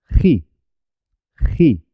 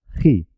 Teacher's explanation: Jinete se escribe con J, página se escribe con G, pero los dos suenan ji, ji, con la garganta